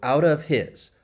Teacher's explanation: And in this case, his, I told you it's very common with words like he, him, his, her. If that H gets muted and we turn down the volume, we can link that final consonant sound.